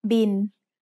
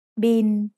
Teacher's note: It's the word bill, but we read it in Thai as bin. Thai doesn't naturally have the L sound at the end of a syllable, so it changes to sound like the letter N. Bo bai mai, sara I, lo ling, bin.